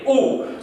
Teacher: ऊ गोल बन रही है, ऊ। तो ऊ किस प्रकार का स्वर हो जाएगा, वृत्ताकार ऊ ऊ।